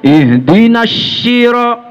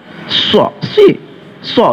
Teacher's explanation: So itu dia sifat hurufnya sofir namanya. Sofir itu suara yang diucapkan seperti ada siulannya